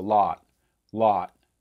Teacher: some americans will actually do some rounding to lot especially when you're looking at the northeast